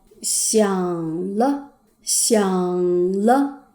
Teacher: 如果前面的字是第三声，后面的轻声比前面高。